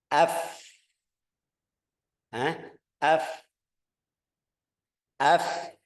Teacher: Yang ketemu ini lihat bibir bawah ketemu sama gigi atas. Tapi juga masih dua gigi aja.